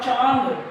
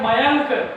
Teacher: कंठ को दबा करके बोलना है और नाक से ध्वनि निकलती है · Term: चंद्रबिंदी वाले शब्द